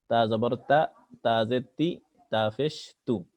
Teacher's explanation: জিবের আগা সামনের উপর দাঁতের গোড়া থেকে তা অক্ষর স্বাভাবিকভাবে পড়তে হয়।